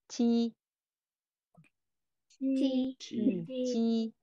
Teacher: Không cần bật hơi nhé mọi người. Như chữ chờ nhẹ của tiếng Việt thôi.